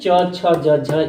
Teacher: जो तालू से बोले जाते हैं जीभ जो है तालू का स्पर्श करती है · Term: तालव्य